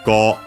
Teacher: So, Go U, but the U becomes simply the long vowel of the O